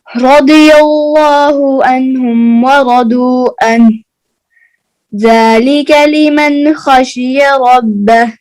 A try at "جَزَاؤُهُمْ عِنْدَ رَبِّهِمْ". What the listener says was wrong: یہ عین کو کلیئر کریں، عین کلیئر نہیں ہے آپ دیکھیں، جزاؤہم عند ربہم، بولیے